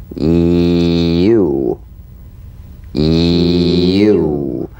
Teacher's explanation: Feel the Y buzz quickly cut off as it slides into the following vowel. · A touch of the Y buzz before another vowel.